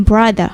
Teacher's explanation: Itu dari brother tapi R-nya nggak di rolling